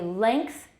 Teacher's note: In some accents, length is regularly pronounced with virtually the same vowel as that in bait rather than in bet. Okay, length, that's also a front short vowel, velar raising.